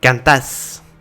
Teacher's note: l'accentuation va être sur le deuxième A et non sur le premier